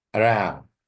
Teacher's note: As a noun or as a verb, the same thing. The stress is on the second syllable, not the first.